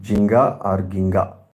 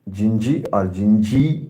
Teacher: By the law of progressive assimilation, we find vowel I in Jinga influences the final vowel A and consequently converts it into I, and we get Gingee or Gingee in its present form.